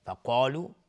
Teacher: اگر بخوایم عبور بکنیم امرهم فقالو، میم ساکن بهش فا اظهار شفوی. فقالو، قاف از حروف استعلاء غلیظ تلفظ میشه، الف هم تابع قاف غلیظ تلفظ میشه. فقالو بنو، اینجا با قلقله میخواد.